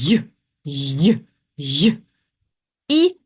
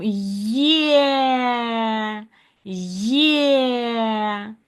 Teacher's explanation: у нас тут відразу два звуки з'єднуються, сполучаються. І тому у нас тут не один звук, а два. І тому звукосполучення.